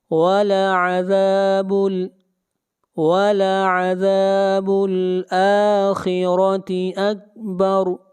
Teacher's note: خواہ کو موٹا پڑھیں گے، خواہ حروف مستعلیہ میں سے ہے، اور را کو موٹا پڑھیں گے، را کے اوپر زبر ہے۔